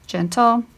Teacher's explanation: You get the ul sound. So you hear a vowel sound when you go between the T and the L